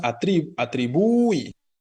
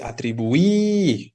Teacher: el alargamiento viene sobre la i específicamente